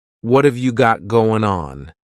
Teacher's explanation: Instead, you're going to hear a reduction or a contraction of the first two words, just like we saw with the previous example. What of so what and have are going to be pushed together